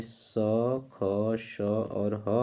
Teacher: तो जिन व्यंजन वर्णों या ध्वनियों के उच्चारण में मुख से ऊष्म वायु संघर्ष करते हुए बाहर निकलती है उसे ऊष्म व्यंजन कहते हैं। जिन व्यंजन वर्णों या ध्वनियों के उच्चारण में मुख से वायु संघर्ष करते हुए बाहर निकलती है उसे ऊष्म व्यंजन कहा जाता है। ऊष्म व्यंजन को संघर्षी व्यंजन भी कहा जाता है।